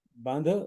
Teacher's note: बंध क्या है कि बध ही है, पर जो हल्का सा नाक में बोलना, इसलिए अनुनासिक बंध